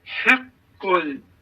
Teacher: Burada hə hərfi boğaz hərfi, qaf qalın, ləm isə incə. Biz burada elə etməliyik ki, qaf hərfi öz qalınlığını saxlamalıdır, ləm də incəliyini.